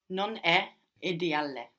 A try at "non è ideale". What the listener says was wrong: Good, but careful not to pronounce two L's on the end there, ideale. No, we want to say ideale. Non è ideale.